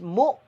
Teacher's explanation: کا قاعدہ ہوگا، میم حمزہ پیش مو، یہاں جھٹکا دیں گے، یہ واو مدہ نہیں ہے بلکہ حمزہ ساکن ہے، میم متحرک اور حمزہ ساکن ہے، لہذا یہاں جھٹکا دیں گے میم کو